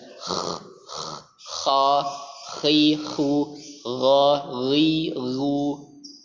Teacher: Jadi ada getaran ya. Letaknya ini seperti di dekat anak-anak lidah.